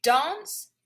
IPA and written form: dɑːns (Dance)